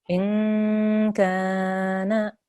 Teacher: that kaf is for 2 seconds because there's alif madda there.